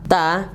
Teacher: makhrajnya itu ujung lidah menempel ke pangkal gigi seri atas ya. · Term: huruf ta